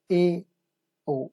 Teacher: आप देख पा रहे हैं कि इनमें हमारा मुंह आधा खुल रहा है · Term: अर्ध संवृत स्वर